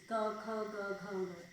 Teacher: एकदम गले से बोले जाते हैं, कंठ से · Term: क वर्ग